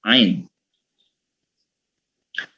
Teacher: Nah, jadi cara cara membacanya itu jadi huruf Ain ini termasuk dalam kategori huruf yang terletak di pangkal tenggorokan ya, pangkal tenggorokan. Jadi pangkal bagian lidah yang paling belakang itu seperti ditempelkan dengan dinding-dinding tenggorokan. Jadi memang agak tebal, gitu.